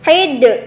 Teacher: qalqalah kubra, yaitu qalqalah yang goncangannya yang sangat besar